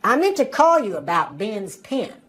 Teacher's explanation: for southern accents, the vowel sounds i and e are pronounced the same way